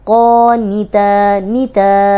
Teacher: نون زیر نی یہ بالکل بھی لمبی نہیں ہو رہی، اور اگر ہم پڑھیں گے قونیتا تو غلط ہو جائے گا، ترجمہ بدل جائے گا.